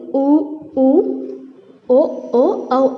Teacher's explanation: வாய் திறக்கும் முயற்சியுடன் இதழ்களை குவிக்கிறது மூலமாக பிறக்கின்றன